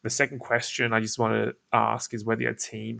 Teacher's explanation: slowing down my vot my tonality a little bit I'm I'm my voice you'll notice is getting a little bit more creaky